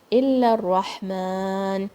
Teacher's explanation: Ra is heavy, ha will come from the middle of your throat, and you can take a pause here.